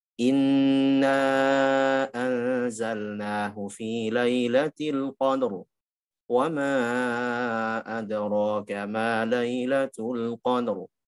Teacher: Ya, seharusnya jangan al-qadr, seharusnya al-qadr. Posisikan ro kembali kepada posisi tafkhim, bukan al-qadr posisi pipih ketika kasrah